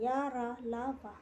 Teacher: या, रा, ला, वा अंतस्थ व्यंजन अल्प प्राण होते हैं। · अल्प प्राण व्यंजन उच्चारण में श्वास का कम मात्रा में निकलना। श्वास का कम मात्रा में निकलना, इसे अल्प प्राण कहते हैं।